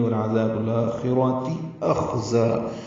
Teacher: خا ساکن پر پڑھا جائے گا اور اس پہ ہمس ہوگا، زا کو تیز صفیر کی آواز سے نکالیں گے · را بھی پر ہے، تا مربوطہ جلدی سے باریک پڑھیں گے